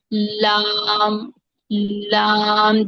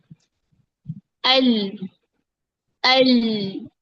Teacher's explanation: लाम अदा करके देखिए, लाम लाम। जहां से दाढ़ें शुरू होती हैं वहां तक हमारी जुबान ऊपर लगती है, फिर अदा होता है लाम। अल अल।